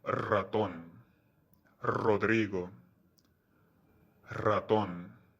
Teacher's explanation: The R in the beginning of words is often pronounced with rolling R.